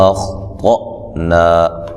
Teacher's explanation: اخ، خا کو موٹا ادا کریں گے لیکن ہلانا نہیں ہے. تو کو موٹا ادا کریں گے اور یہ حمزہ کو جھٹکے سے ادا کریں گے